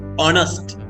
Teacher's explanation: horse කියනකොට වගේ හොයන්න නෙමෙයි honest. ඕ කියන h අකුරෙන් පටන් ගත්තම මෙතන h අකුර silent වෙනවා